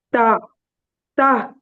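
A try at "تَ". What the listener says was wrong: அது தாங்கிறது பிழை. தான் வரக்கூடாது.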